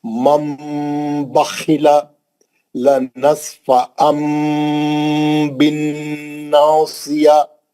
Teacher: نون کی آواز کو میم سے بدل کر غنے کے ساتھ پڑھنا ہے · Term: اخلاب